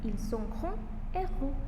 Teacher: Le S et le X ne se prononcent pas.